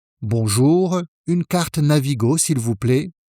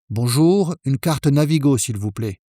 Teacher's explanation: Notice how the voice goes down slightly at the end. In French, most statements finish with the following intonation.